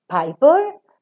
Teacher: In a word like piper, the first per is aspirated, the second per is not aspirated.